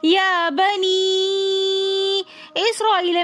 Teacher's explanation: یا بنی میں مد منفصل ہو رہی ہے۔ مد منفصل کی مقدار کم سے کم 3 الف ہے، اور ویسے عموماً اس کو 5 سے 6 الف کی مقدار کھینچ کر پڑھنا چاہیے